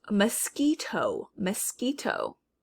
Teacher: my mouth never makes the shape like i'm trying to say w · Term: k sound